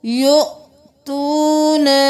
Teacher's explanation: یہاں پر واو کو نہیں پڑھیں گے، حمزہ کو جھٹکا دیں گے، یؤتونن، تونن نہیں کرنا۔